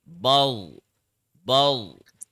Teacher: In the case of the letter la, which is a heavy letter, and you have to place the tip of the tongue at the back side of the upper teeth